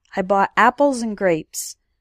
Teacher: You can barely hear the word and, it just sounds like apples and grapes. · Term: reductions